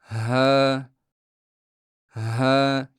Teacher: Shunda havo u orqali oʻtib ishqalanish hosil qiladi va natijada ha tovushi paydo boʻladi. Havo harakati natijasida yuzaga keladigan bu mayin ishqalanish aynan ha tovushini shakllantiradi.